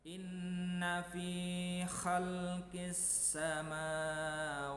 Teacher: Maka di situ karena hukum bacanya alif lam samsiyah, alnya tidak dibaca, menjadi inna fi khalqis samawati.